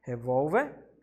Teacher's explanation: o vol é a mais forte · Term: paroxítona